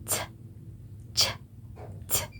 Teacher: starting with interruption in the passage of air followed up by a fricative sound. For example, voiceless t, ch, t. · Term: affricate